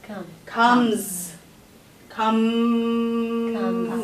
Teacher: If you have that sound, that the sound comes out but no air, it's a Z at the end.